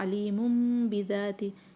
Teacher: तनवीन को हमने मीम में चेंज किया और उसके बाद हमने इसको गुन्ना बना दिया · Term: इक़लाब